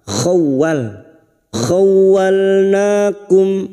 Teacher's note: Masuk kata huruf waw yang bertasdid, hanya masuk tanpa ditahan lama-lama.